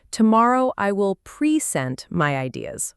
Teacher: People often say, tomorrow I will present my ideas, with stress on pre. And the problem with that is it sounds unnatural to a native speaker.